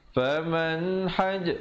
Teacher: bunyi saja man terus masuk haj kerana di situ izhar halqi